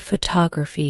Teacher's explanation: stressed more than others this is especially true for longer words take the word photography for example the stress is on the second syllable